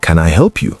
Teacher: When you ask a yes or no question, like, "Can I help you?" Your voice should rise at the end to show friendliness.